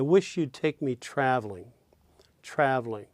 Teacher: Note that in traveling, the first syllable, of course, is stressed, trav. And then the ul, of course, weak.